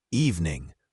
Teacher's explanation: with a soft G at the end, sometimes almost silent